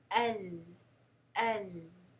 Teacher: The tip of the tongue is blocking the sound and the air from going through. So it's coming from the sides of the tongue. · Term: Inhiraaf